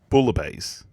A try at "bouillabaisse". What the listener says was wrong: Nope, incorrect. You don't say bouillabaisse. It's bouillabaisse. don't pronounce the L's.